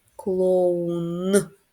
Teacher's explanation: Який наступний після о клоун у звук у він голосний і останній клоун звук н він приголосний твердий